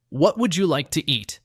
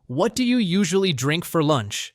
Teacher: pay attention to the rise in intonation at the end of each question and the polite pause before please in the answers.